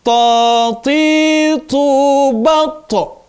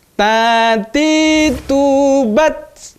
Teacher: Nah, ada qalqalahnya, ada suara yang berlebih saat huruf to itu berharokat sukun